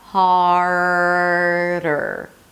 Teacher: So hold it out, hold out the R